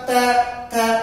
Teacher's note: next है आपका त थ, जीभ बिल्कुल दांत से, त थ, जीभ बिल्कुल दांत से टकरा रही है